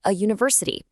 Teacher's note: We say a university because university starts with a yes sound which is a consonant